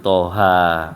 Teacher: toha, itu panjang tapi ringan, ya, nggak perlu ditekan